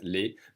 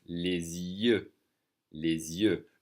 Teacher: We're doing a little liaison here, connecting the supposedly silent S to the Y, to the vowel sound with the Z sound.